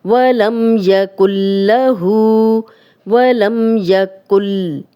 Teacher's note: وَلَمْ يَكُنْ لَهُ اب دیکھیں یہ نون جزم والا ہے اور آگے لام آ گیا ہے لیکن لام پہ شد ہے اور آپ شد کے رولز بھی سارے پڑھ چکے ہیں کہ شد والا حرف ہمیشہ پچھلے زیر زبر پیش کے ساتھ ملا کے پڑھا جاتا ہے. شد سے پیچھے جو جزم والا حرف ہے وہ بالکل بھی پڑھنے میں نہیں آتا اس کی ذرا سی بھی آواز نہیں آتی